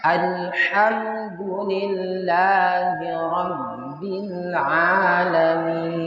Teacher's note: Hati-hati dengan huruf ha. Alirkan anginnya.